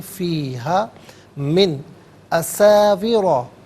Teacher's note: मिन में नून साकिन है और इसके बाद हरफ हल्की हमज़ा आ रहा है तो यह नून साकिन को इजहार के साथ पढ़ा जाएगा।